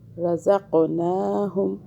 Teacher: قاف کو موٹا پڑھیں اور قلقلہ کریں۔